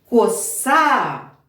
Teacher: коса на другий склад наголос